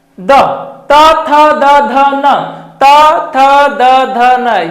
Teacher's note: त वर्ग ये पूरा वर्ग ही बोलिए आपका दांत लगेगा कि टच कर रहा है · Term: दंत्य